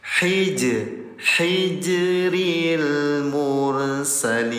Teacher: Jim dalam keadaan sukun namanya qalqalah. Cara bacanya pantulkan. Petel itu pantul, ya.